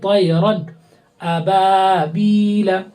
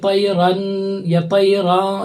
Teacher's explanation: رن بولیں گے بالکل ظاہر کر کے